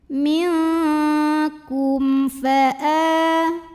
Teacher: Karena ada mim sukun yang menghadapi huruf selain mim dan ba yaitu huruf fa. Maka mim sukun ini kita bunyikan dengan idhar atau jelas bunyi M-nya. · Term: idhar syafawi